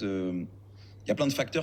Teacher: La première contraction dont on va parler, c'est avec le terme tout simple que l'on utilise très souvent, le terme « il y a », que l'on ne prononce pratiquement jamais comme « il y a », there is. Il y a, dans les conversations françaises, ça va se transformer en « y a ». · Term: contractions